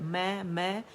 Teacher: میم کا اپنا فطری ایک کاؤنٹ کا غنہ تو ہم ادا کریں گے، دونوں ہونٹوں کو خشک سے آپس میں ملا کر